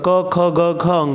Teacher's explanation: क वर्ग के जो क से लेके अंग तक, क ख ग घ अंग, ये पांचों जो अक्षर हैं उनका जो उच्चारण स्थान है वो कंठ है